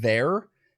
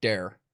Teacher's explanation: say the word there it would sound more like dare like we put a lot of D's in the place of THS